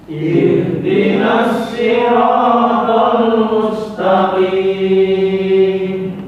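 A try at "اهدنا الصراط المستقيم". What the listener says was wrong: Ya, bukan ihe. Pokoknya hak sukun itu ndak boleh ada pantulan. Ihdinas siratal mustaqim.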